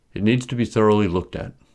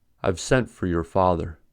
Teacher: the preposition as it is a stranded preposition in other words the verbs are stressed but the prepositions are pronounced fully although unstressed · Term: strong pronunciation